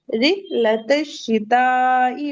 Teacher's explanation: تا کو شین سے ملا دیں گے، کیونکہ یہ شین شمسی لیٹر ہے۔